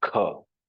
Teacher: if K is pronounced with an extra push of air, it becomes Mahaprana Kha